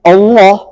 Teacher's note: hamzahnya tipis lamnya tebal karena lam jalalah